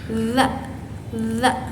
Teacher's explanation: keluar dari ujung lidah yang menyentuh ujung gigi yang di depan atas. Nah, dia itu bersifat majhur.